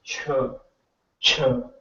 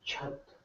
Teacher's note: your flat part of the tongue is touching the palate. That's why it's a palatal.